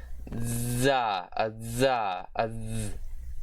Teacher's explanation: the voiced dental sibilant fricative consonant